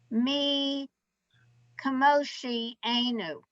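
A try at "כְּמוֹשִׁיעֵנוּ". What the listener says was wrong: It's not k. It's ch. Chmo.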